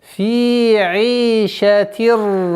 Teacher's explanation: Ассимиляция без назализации. Идгам биля гунна.